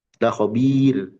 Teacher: Nah, ayat terakhir dibaca tipis. La khabir. Karena roknya sukun, sebelumnya kasrah.